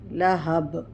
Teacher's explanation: یہاں پہ قلقلہ ہوگا با پہ